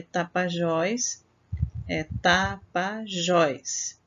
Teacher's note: A sílaba mais forte está na última sílaba.